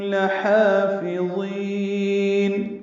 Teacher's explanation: لحافظین لام کو جلدی پڑھنا ہے، ہا وسط حلق سے ادا کرنا ہے